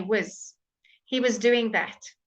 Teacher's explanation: was changes to whiz when it's not stressed